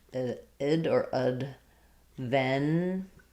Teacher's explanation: And then because I'm stressing on the first syllable, my ven syllable is going to be more like vin, or just even vin, Adventist. If I'm saying Adventist, then I'm going to lose that clear a. It's going to be much shorter and more almost like an I sound